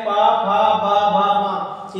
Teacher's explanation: इसको बोलने पर क्या होता है? आपके दोनों होंठ एक दूसरे को टच करते हैं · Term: प वर्ग, पा वर्ग